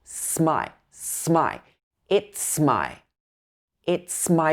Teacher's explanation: it's and my join together